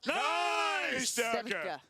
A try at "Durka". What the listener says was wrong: Roll the R. Come on.